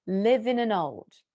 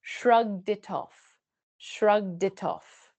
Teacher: It's almost like old starts with n. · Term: catenation